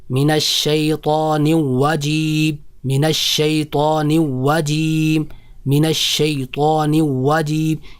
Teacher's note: جب ہم را کو ادا کرتے ہیں تو ہم را کی جگہ واو ادا کر رہے ہوتے ہیں جو کہ بہت بڑی غلطی ہے. کیسے ہم ادا کرتے ہیں؟